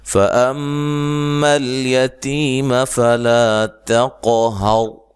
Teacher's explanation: मीम मुशद्दद पे गुन्ना ज़रूरी है, लाम को हिलाना नहीं है।